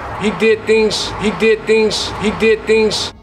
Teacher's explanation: With devoicing, we use the voiceless equivalent, which is an S. So the Z sounds at the end of words turn into more of an S sound. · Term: devoicing of word final Z